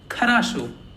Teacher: Again, only the last O is stressed.